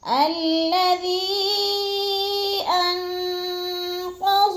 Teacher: حروف مدہ کے بعد حمزہ دوسرے کلمے میں آ گیا ہے، مد منفصل ہے، 4 الفی مد ہے، 4 الف کے برابر ہم نے اس کو لمبا کر کے پڑھنا ہے۔